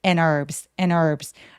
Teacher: H 없이 herb라고 발음합니다. 그래서 요거는 묵음이에요.